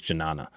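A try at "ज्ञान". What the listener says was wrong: I feel like it'd be silent with the J. Possibly.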